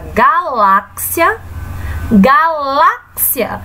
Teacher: ela não é a sílaba tônica porque ela não está acentuada a sílaba acentuada é a sílaba lá